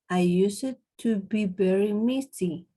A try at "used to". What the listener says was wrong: Okay, remember, we don't say I use it. Use it. is a one sound. I used to be very. I used to be very messy.